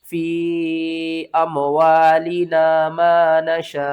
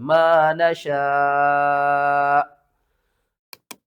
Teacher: जब भी कुरान पाक में हमज़ा साकिन होती है ना, तो उसको हम झटके के साथ पढ़ते हैं। किस तरह? फ़ी अमवालिना मा नशा, लास्ट में थोड़ा सा झटका आना चाहिए, मा नशा।